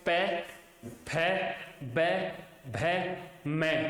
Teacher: ओष्ठे व्यंजन, ओष्ठे व्यंजन के नाम से जाने जाएंगे। तो उन व्यंजनों को ओष्ठे व्यंजन कहते हैं जिनका उच्चारण करने पर ऊपर और नीचे के दोनों होठों का स्पर्श होता है